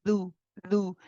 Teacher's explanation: Be careful, the dal shouldn't have air with it.